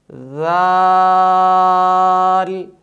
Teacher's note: صفت جہر کی وجہ سے اس حرف کی آواز میں بلندی ہوگی